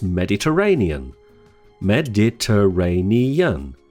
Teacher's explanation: Mediterranean has six syllables the main stress is on the fourth syllable